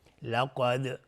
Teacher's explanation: قاف از حروف استعلا است و دال اینجا قلقله میخواد